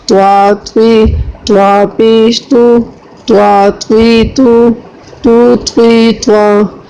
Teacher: توا کو پر پڑھنا ہے چاہے اس کے نیچے زیر آ جائے چاہے اس کے اوپر زبر آ جائے